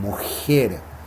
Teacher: la J chilena, que se pronuncia en realidad con el paladar